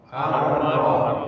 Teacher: Ro ini punggung ujung lidah atau ujung lidah menyentuh gigi seri atas, tentunya bagian dalam out, atau gusi sudah bisa gusi out, sehingga dia namanya takrir kan? · Takrir ini getaran huruf ro. Bahwa huruf ro itu tidak boleh bergetar melebihi daripada sekali.